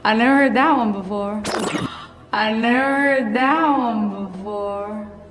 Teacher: ese sonido de D se puede omitir justo cuando está antes de una palabra que inicia con TH, como en este caso la palabra that.